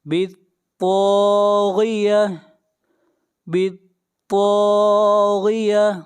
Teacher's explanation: طا کو موٹا پڑھیں گے، طا حروف مستعلیہ میں سے ہے، اور طا کو کھینچ کر پڑھیں گے 1 الف کے برابر، یہاں پر الف مدہ ہے۔